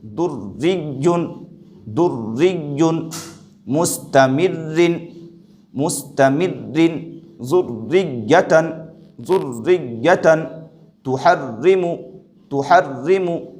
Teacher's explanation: یہاں پر رائے مشددہ کے نیچے زیر ہے، اس رائے مشددہ کو باریک پڑھیں گے